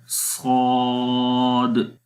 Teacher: اس میں آواز اور زیادہ موٹی ہو جاتی ہے کہ جب ہم زبان کو تالو کے قریب لے جاتے ہیں، اس طرح محسوس ہوتا ہے کہ وہ اس کے ساتھ چمٹ گئی ہے، تو اس وقت اس کے اندر زیادہ موٹائی آ جاتی ہے۔ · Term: صفت اطباق